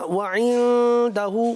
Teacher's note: اخفا کو مکمل 1 الف تک کھینچ کر پڑھیں، مد کو مکمل ادا کریں.